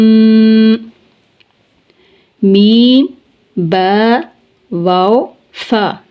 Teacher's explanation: ان 4 حروف کا تعلق شفتین سے ہے، یعنی ان کی ادائیگی شفتین سے ہوتی ہے، ہونٹوں سے ہوتی ہے